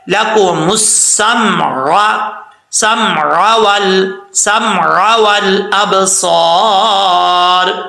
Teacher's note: عین کو حمزہ پڑھ جاتے ہیں